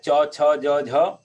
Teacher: इनका स्थान था तालु, दांत के ठीक ऊपर